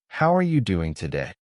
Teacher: You copy the stress on how and the rising tone at the end.